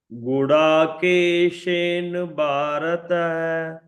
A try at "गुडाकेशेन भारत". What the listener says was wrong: Mahodaya, in Hindi, people will say Keshen, but in Sanskrit, full word you pronounce Gudakeshena Bharata.